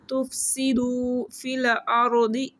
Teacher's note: را کو موٹا پڑھیں گے، دعات کو بھی موٹا پڑھیں گے